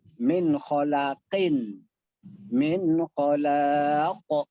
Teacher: Namanya qalqalah kubro. Pantulannya lebih besar. Karena dia berada di akhir kata. Tidak ada huruf berikutnya yang dibaca.